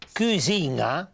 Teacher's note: la pronuncia velare della N